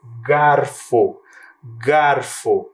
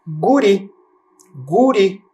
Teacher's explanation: Você percebe que a vogal está bem aberta, né?